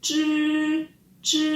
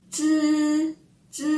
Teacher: kalau zhi itu posisi lidah kita tergulung ke langit-langit atas mulut kita. Sedangkan kalau bunyi 知， itu lidah kita tidak tergulung tetapi menyentuh ke gigi depan mulut kita.